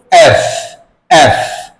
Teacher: যেটা আমিও ভুল করেছিলাম বাট বলল যেটা এফ হবে অর্থাৎ নিচের ঠোঁটটা কি করতে হবে উপরের দাঁতের সাথে লেগে তারপর বাতাস বের করে দিতে হবে